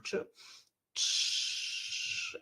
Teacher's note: ч а немає звука ш Аналогічно просимо дитину вдихнути носом і довго вимовляти звук ч ч і в нас сам по собі звук ч перетворюється хочемо ми цього чи не хочемо на звук ш